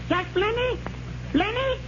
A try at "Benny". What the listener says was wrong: No, Benny. The L is silent.